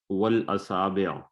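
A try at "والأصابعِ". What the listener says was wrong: نہیں، آخر میں کیا پڑھنا ہے؟ وقف نہیں کرنا.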